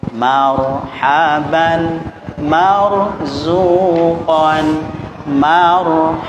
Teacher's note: kalau ro itu sukun, posisi dia akan berhukum tafkhim atau tebal, maka bibir itu mengikuti biasanya agak monyong sedikit ya.